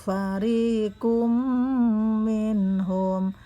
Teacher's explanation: tanwin bertemu mim, idgham bi gunnah, hukumnya mendengung, panjangnya sekitar dua harokat. Minhum, nun mati bertemu ha, di situ hukumnya jelas, disebut izhar.